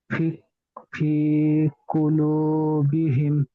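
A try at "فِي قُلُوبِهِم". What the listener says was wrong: হিমটা গুন্না হবে ভাই। ফি কুলুবিহিম। মিম যাবার মা হবে, রর উপরে সাকিন হলে তাহলে মিমের ডটা, মিমটা গিয়ে রয়ের সঙ্গে যুক্ত হতো, কিন্তু নেই। ফি কুলুবিহিম মার।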